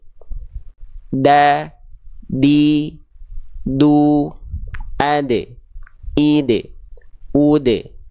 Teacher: Ujung lidahnya nempel kemana? Bukan ke langit-langit kan, tapi ke pangkal gigi sari atas. Ya, bukan ke giginya, tapi ke gusinya. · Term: huruf dal, huruf Dal